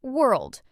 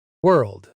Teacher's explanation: Some learners add an extra sound between were and erled, but it's just one smooth sound, world.